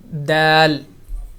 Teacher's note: دال زبان کی نوک سے اور اوپر والے سامنے والے دانتوں کی جڑ سے دال یہاں سے ادا ہوگا۔